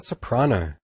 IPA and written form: səpr'ɑno (Soprano)